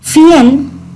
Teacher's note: Miren el diptongo que hay acá. Está la unión de la I y la E, una vocal cerrada y una vocal abierta, fiel, y se unen en la misma sílaba.